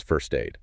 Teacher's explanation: >> It is the s and the t in first form of cluster. When the word aid follows, that final t is just siphoned off to start the new syllable